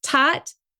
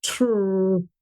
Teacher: If you look at my lips, tot, tr, ta, tr, you can see my lips are rounded for the T and trot, but not for the T and tot. So a child is actually hearing a regular T versus what's called a retroflex T in those two cases